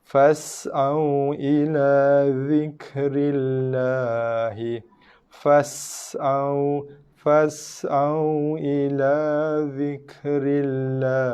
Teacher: Bacaan lam, lafzul jalalah dengan bacaan tarqiq nipis